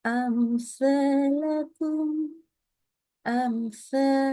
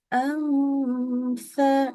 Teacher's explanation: Bacanya mimnya dibaca izhar. Mimnya harus dibaca jelas. Ya, jangan dikasih tambahan dengung.